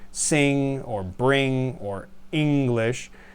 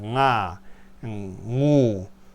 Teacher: it's similar to an N, but made with the back of the tongue